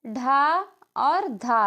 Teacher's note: कौन सी है जो महाप्राण ध्वनियां है यह जो है ढ और धा है